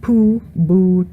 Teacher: when P, B, or T and D is followed by an U, they become labialized